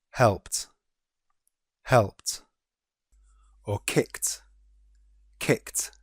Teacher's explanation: P and C are unvoiced sounds. So they are followed by tu.